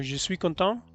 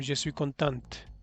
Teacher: Al pronunciar la T, lo estás diciendo en femenino.